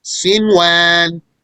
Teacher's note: pronouncing the noon clearly, despite that it has a sukoon and it's followed by a wow. Since they appeared in the same word, then there is no merger here. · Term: make the noon apparent